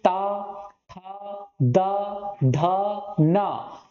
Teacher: ऊपर के दांतों से आपकी जीभ और वायु का क्या होता है? स्पर्श होता है।